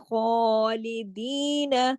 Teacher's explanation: ख्वा को एक अलिफ के बराबर खींचना है, क्योंकि उसके ऊपर खड़ी जबर है। खालिदीन, लाम को नहीं खींचना, लाम एक हरकत के साथ है, लाम जेर ली, खाली। · ख्वा को मोटा भी पढ़ना है, ख्वा को खराश के साथ भी पढ़ना है, और ख्वा को एक अलिफ के बराबर खींचना है, क्योंकि उसके ऊपर खड़ी जबर है।